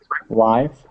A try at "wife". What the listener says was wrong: You did something weird with your W, but it's okay.